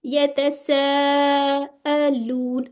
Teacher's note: الف مد کے بعد کیا آ رہا ہے؟ حمزہ آ رہا ہے. تو یہ آپ کا 4 to 5 کاؤنٹس والی مد متصل واجب بنے گی